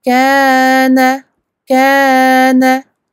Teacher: 2 temps sur le kef, un seul temps sur le noun